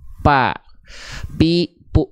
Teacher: kalau huruf dilafalkannya bibir atas bibir bawah jadinya huruf P dia pa pi pu dia tidak akan mengalirkan nafas dia tidak